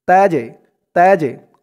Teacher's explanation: এই জিমটা কলকলার হরফ, ধাক্কা দিয়ে পড়তে হবে। তাজে, তাজে, কলকলার হরফ এখানে একটি পড়লাম দাল।